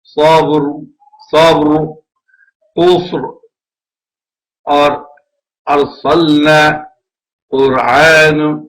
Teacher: اگر را سکون والا ہو یعنی ساکن ہو لیکن اس سے پہلے والے حرف پر فتح ہو یا ضمہ ہو تو بھی یہ موٹا ہی پڑا جائے گا